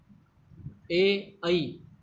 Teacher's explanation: ए ऐ इनका उच्चारण स्थान कंठ तालु है।